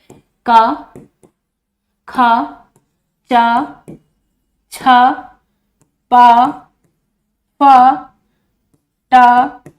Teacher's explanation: इस तरह के जो पांचों वर्ग के पहले और दूसरे अक्षर हैं ये अघोष होते हैं। तो हमारा चा पहला ऑप्शन, ए ऑप्शन चा, क्योंकि ये पहला वर्ण है तो ये अघोष होगा।